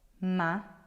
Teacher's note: The one before that is your second to last. So the accent here will be on ri.